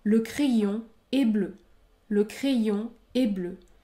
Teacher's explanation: il ne faut pas prononcer le N à la fin du mot crayon